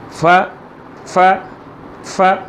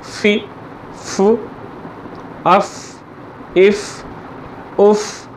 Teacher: फ़ा जो है ये सनाया उलिया, यानी सनाया के दो उलिया ऊपर वाले दो दांत जो हैं उनका किनारा नीचे के होंठ का पेट यानी अंदर का हिस्सा, उससे ये अदा होता है। जैसे देखें, अगर आप मेरी तरफ़ देख रहे हैं तो इसको देखें, या नोट्स जो आपको भेजे गए हैं उस पे इसका मखरज दिया गया है, उसके ऊपर आप देखें तो आपको नज़र आएगा कि दांत जो है वो होंठ के साथ लग रहा है।